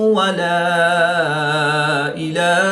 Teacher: الف مدہ کے بعد حمزہ دوسرے کلمے میں ہے تو یہاں پر مد منفصل ہوگی